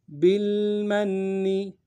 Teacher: با کو لام ساکن کے ساتھ ملانا ہے، لام ساکن میں غنہ نہیں ہوگا